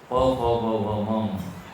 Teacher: प फ ब भ म, ये ओष्ठ से निकलते।